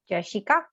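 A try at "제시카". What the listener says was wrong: Ka can be a bit more close to the k pronunciation. Jessica.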